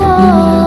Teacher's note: للملا کے ساتھ بڑی مد ہے، اس کو ہم 5 سیکنڈ تک لمبا کریں گے